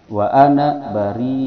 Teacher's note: ada mad wajib muttasil yang panjangnya 5 harakat